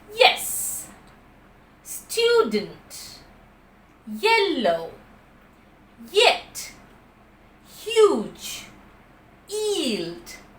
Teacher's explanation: there is no complete closure and just the articulators are coming near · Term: semi vowel